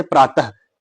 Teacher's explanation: विसर्ग का उच्चारण स्थान जो है वो ह के समान होता है